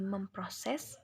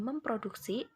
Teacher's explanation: jika mendapat imbuhan meng, fonem P pada gugus konsonan PR tidak luluh